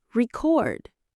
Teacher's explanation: As a noun, we stress the first syllable record. As a verb, we stress the second syllable. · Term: word stress